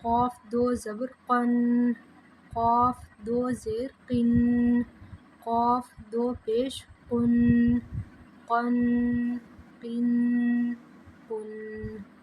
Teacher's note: قوف جو ہے نقطے والا ہے، اس کی آواز حلق سے نکالیں گے